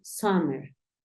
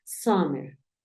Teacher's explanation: como si tu intención fuese decir una a pero terminas diciendo una o